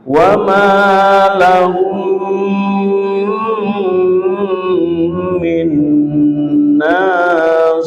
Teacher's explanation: Mim sukun bertemu mim dibaca dengung dengan lama.